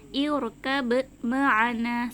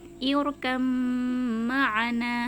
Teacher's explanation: Tulisannya seperti ini, irkab ma'ana, seperti itu ya. Tapi karena huruf ba dengan mim ini sama-sama makhraj asyafatan, sama-sama makhraj yang keluar dari kedua bibir, maka cara membacanya irkam ma'ana, seperti itu.